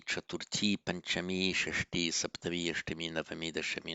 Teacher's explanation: From fourth onwards, the feminine forms end in a long e